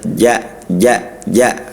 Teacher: harus jahr dia jahr dan syiddah harus kuat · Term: huruf jim